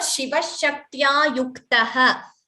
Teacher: Kta is not Mahaprana.